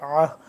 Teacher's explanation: عین کو حلق کے درمیان والے حصے سے اور اس ہا کو حلق کے سب سے آخر والے حصے سے سینے کی طرف اور سینے کے پاس سے.